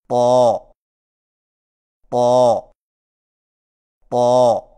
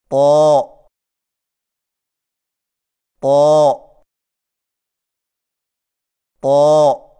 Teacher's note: طا کی ادائیگی میں زبان کی نوک کو ثنایا علیہ کی جڑ سے لگا کر اور زبان کے پچھلے حصے کو تالو کی طرف بلند کرتے ہوئے موٹی آواز میں پڑھیں، یعنی طا طا طا.